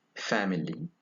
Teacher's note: it is a voiceless labio dental fricative